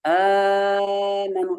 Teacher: Amanu, lebih dari 2 harokat Imam Warash. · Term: mat badal